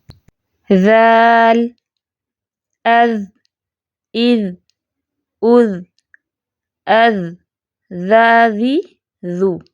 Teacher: ذال کی ادائیگی میں سا کی بنسبت ایز کمپیئر سا، رأس لسان ذرا نسبتاً مضبوطی کے ساتھ ثنایا اولیاء کی کناروں سے لگتی ہے اور باقی زبان نیچے ہی رہتی ہے